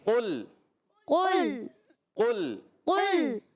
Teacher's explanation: بعض بچے لام کو ہلاتے ہیں، قل قل نہیں پڑھنا، قاف موٹا لام باریک